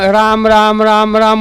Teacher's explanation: काय इंडिकेट होतं त्यातनं, र हे मूर्धन्य, म्हणजे टाळ्याला जीभ जेव्हा लागून स्वर अडवेल त्यावेळेला र येणार. त्यातला आ हा कंठ अंताशी येणार आहे आणि म हा ओष्ठे आहे · त्यातला आ हा कंठ अंताशी येणार आहे आणि म हा ओष्ठे आहे. हा एवढा मोठा ब्रिज लागोपाठ तो वर्ण राम राम राम राम म्हणा, म्हणजे जबडा हलणारच ना, कसं शक्य आहे न हलणं.